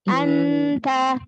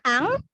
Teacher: Anta, jangan ang, anta dari depan, karena ta kan makhrajnya dekat dari nun, ta, ya, maka dari depan ikhfanya. Anta, iya, jangan angta, ya, ikhfa itu hukumnya ikhfa, nun sukun ketemu ta, ya.